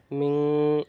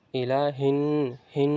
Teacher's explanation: যদি হরফ থেকে কোন একটি হরফ আসে তাহলে ইখফা হবে অর্থাৎ অস্পষ্ট গুন্না করে পড়তে হবে লুকায়িত গুন্না করে পড়তে হবে